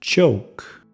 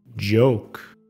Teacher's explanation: El sonido J combina el sonido D con J. La manera de producirlo es casi igual al CH, solo que J es sonora.